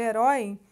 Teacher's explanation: Na verdade, aí primeiro vem a semivogal, né, que é o E, e depois o I como vogal. Na palavra herói, a gente vai ter o O como vogal e o I como semivogal. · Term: ditongo